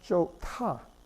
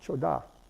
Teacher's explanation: So this word here, which is the infinitival form, the dictionary form, to be good, there, this is pronounced chota, not choda, but chota. The T gets aspirated because of the hiut, which you have to put at the end of the root.